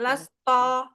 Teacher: Jadi to, jangan to, tapi ta, lasta, jangan lasto gitu. Kalau lasto itu pasti pangkal lidahnya sedikit naik.